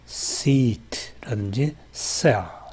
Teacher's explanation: 마찰음은 기본적으로 지속음이고요. 그리고 무성음이죠. S 소리는. · S 소리를 보면은 그 조음 위치가 바로 잇몸입니다. 여기서 잇몸이라 하면 윗니 바로 뒤를 말하는 것이고요. 혀끝이나 혓날을 이 잇몸에 접근시켜서 마찰을 일으킵니다. 마찰음은 기본적으로 지속음이고요. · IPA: /s/